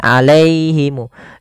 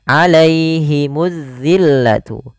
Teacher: Jangan alaihimu, jangan dibaca terdengar huruf e, tapi i